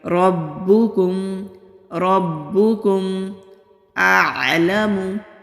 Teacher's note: کاف کو باریک پڑھیں گے، میم ساکن پر اظہار ہوگا یعنی کہ میم کی آواز کو کلیئر ادا کریں گے